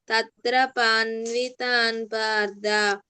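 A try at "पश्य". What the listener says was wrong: పన్వ కాదు, పశ్య. పశ్య అక్కడ శ్యా ఉంది కదా, పశ్య చెప్పు.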